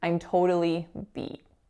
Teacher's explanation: And how I just said it, I didn't release my T.